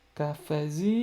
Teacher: esse Z se prolonga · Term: sílaba tônica